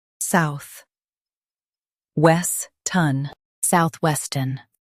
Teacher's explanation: Stress west and keep ton light.